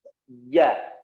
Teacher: ja itu tengah lisannya, ya, disentuhkan ke atas, ke langit-langit atas. Ja, ditempelkan. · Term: huruf ja